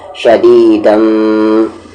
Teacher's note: میم پر تشدید رہے یا نون پر تو غنہ ہوگا، یعنی آواز کو یہاں پر ناک میں رکھیں گے، شدیدم۔